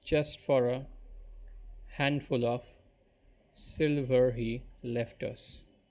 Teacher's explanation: one stress syllable followed by two unstressed ones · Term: dactyl